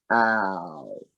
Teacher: it starts wide open and it moves towards rounded lips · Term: diphthong